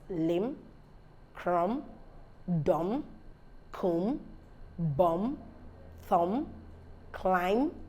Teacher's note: rule one says that b is not produced after M so when you have a word that has MB MB the